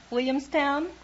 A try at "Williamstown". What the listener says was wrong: What happened to the L's? You knocked the L's out of that word.